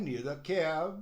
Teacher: quando tem um de e logo a seguir vem uma vogal eles gostam de emendar